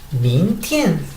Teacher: la palabra mintien, subo en esta parte min, luego tien